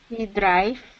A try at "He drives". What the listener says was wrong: y con la S al final. So drives, drives. You just have to work a little bit on putting the S at the end, like stretching the S a little bit.